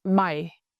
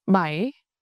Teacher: Your voice dips down slightly and then comes back up, similar to how English speakers emphasize a question. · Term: dipping tone